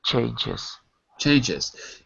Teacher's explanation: it's written with an S but the sound is like a z